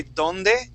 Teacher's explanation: In Spanish, like if you were to say donde, okay, your tongue is touching the back of your teeth.